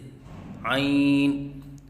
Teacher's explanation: بعض بچے عین کی ادائیگی کے وقت آواز ناک میں لے کے جاتے ہیں، یہ غلط ہے، جیسے عین، اور استاد کے بار بار کہنے کے باوجود بھی اور بچے کی کوشش کرنے کے باوجود بھی پھر بھی آواز ناک میں خود بخود چلی جاتی ہے۔